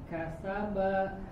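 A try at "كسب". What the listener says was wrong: Sa. Buka lagi. Kasa. Jangan deraskan aja karena dia sofir, suaranya tajam, ya. Sofir itu angin yang dikeluarkan, ya, suaranya cukup tajam. Kasaba.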